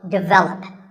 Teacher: the first syllable is actually de, and the stress is on the second syllable, so develop.